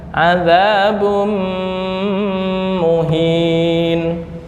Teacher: Nah, adzabum dengung. Dengung ditahan dua ketukan.